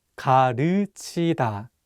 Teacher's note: this vowel 으 is much wider than the vowel 우.